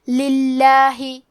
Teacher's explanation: لام کے نیچے زیر ہے، لہذا ہم لفظ الجلالہ مطلب کلمت اللہ کے لام کو پتلی آواز میں پڑھیں گے